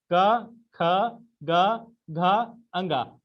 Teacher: क वर्ग का उच्चारण स्थान क्या है? कंठ है। ठीक है, जिसको कंठ ध्वनि के नाम से भी जाना जाता है।